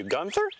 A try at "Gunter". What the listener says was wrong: It's Gunter, no H. Trust me, it's Gunter.